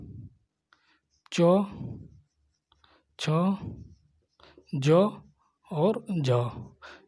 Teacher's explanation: संघर्षी में देखिए ये संघर्षी हो गया। स्पर्श संघर्षी मतलब संघर्ष तो हो रहा है, ठीक, स्पर्श भी कर रहा है चारों तरफ